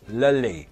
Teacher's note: With the dark L, yeah, the tongue will hit more against the back of the top teeth, or even just under the top teeth, just here.